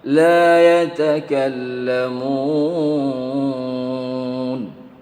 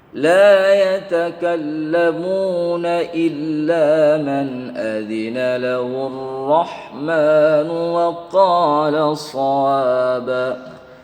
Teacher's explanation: Ini namanya mad adad lis-sukun. Mad adad lis-sukun ini apabila dibaca waqaf maka panjang.